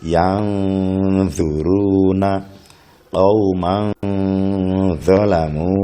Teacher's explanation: Sekali lagi, ikhfa adalah membaca suara nun mati dengan samar, tidak jelas nunnya, suara nunnya, dan dengan berdengung